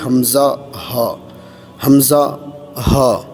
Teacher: हलक का वो आखरी हिस्सा जो सीने की तरफ है · حلق یعنی حلق کا وہ آخری حصہ جو سینے کی طرف ہے